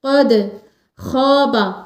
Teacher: قد دال پر قلقلہ بھی کریں گے اور قاف کو موٹی آواز میں پڑھیں گے